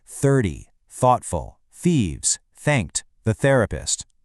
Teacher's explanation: Every single th in that sentence is the voiceless engine off sound